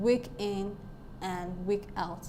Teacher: in week in we have a stress syllable followed by an unstressed syllable so week is stressed weak is stressed and N is not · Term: Troy